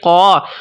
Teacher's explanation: اب الف سے پہلے قاف آ گیا ہے، قاف موٹے حروف میں سے ہے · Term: موٹا